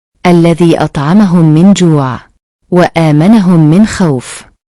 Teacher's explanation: memasukkan huruf mim ke dalam huruf mim disertai dengan suara guna sekitar dua ketukan atau harakat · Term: idgam mutamasi lain